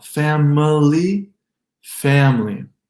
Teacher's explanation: Got an M linking with an L.